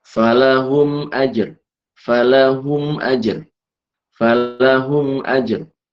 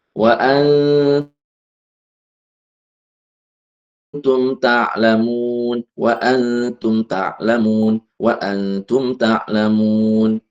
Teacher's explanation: Huruf mim maksudnya itu keluar dari syafatain yaitu kedua bibir. Cara bacanya adalah dengan menyuarakan mim dengan jelas di bibir tanpa disertai dengan dengung. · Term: izhar syafawi, Izhar syafawi